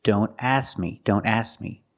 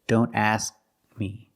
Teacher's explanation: When you say don't ask me, don't drop the K completely. We need to make the position of the K, but we don't release the sound. We don't say k, but we need to make the position.